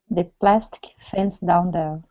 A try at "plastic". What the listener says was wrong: Almost, almost. So I need a vowel sound in between. So you're saying plastic, plastic. Okay, so you're skipping over the vowel. It's plastic, plastic.